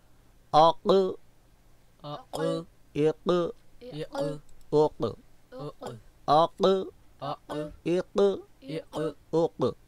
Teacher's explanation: اب ہم لحات یعنی اوپر والے کوے کو زبان کی جڑ سے ملائیں گے، ٹچ کریں گے، تو پھر حرف قاف کی آواز ظاہر ہوگی. اگر ہم اس کوے کو، لحات کو زبان کی جڑ سے ملاتے نہیں ہیں، ٹچ نہیں کرتے ہیں، تو حرف قاف کی آواز ظاہر نہیں ہوگی.